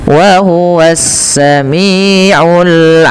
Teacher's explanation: ada alif lam syamsiyah, alif lamnya langsung diidghamkan ke sin. Yang sehingga sinnya menjadi harakat tasydid.